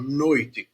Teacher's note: é um ditongo oral porque o som tá todo aqui na boca